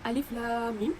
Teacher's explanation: Jadi pembacaannya dengan nama hurufnya dan perlulah diidghamkan. Panjangnya 6 harakat. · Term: mad lazim harfi